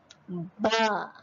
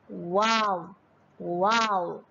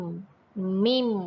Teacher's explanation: Apabila huruf ba, waw, fa dan huruf mim apabila dibaca akan berlaku muncung pada bibir. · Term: asy-syafatain